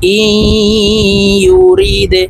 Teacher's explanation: এই হামজা ইয়ার সাথে গুন্নার সহিত মিলাইয়া পড়ব, মাঝখানে জজমওয়ালা নুন বাদ পড়ে যাবে। হামজা ইয়া জের ই, ইয়া পেশ ইউ, র দাল জের রি দে, দাল কলকলার হরফ ধাক্কা দিয়ে উচ্চারণ করতে হবে, নিচের দিকে ধাক্কা দিয়ে উচ্চারণ করব।